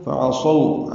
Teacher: عین وسط حلق سے صاد پر پڑھیں گے